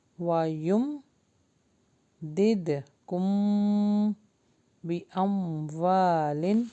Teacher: وَيُمْدِدْكُمْ، اچھا یہاں پر غنہ ہوگا، دد، یہاں پہ قلقلہ ہو رہا ہے، دد کم، میم کے بعد با رہا ہے تو یہاں پہ ہم غنہ کریں گے